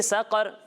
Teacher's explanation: यहाँ कॉफ को पुर पढ़ना है, कॉफ हुरूफ मुस्तारिया में से, इसे भी पुर पढ़ेंगे और रा को भी पुर पढ़ेंगे, बारीक नहीं पढ़ेंगे।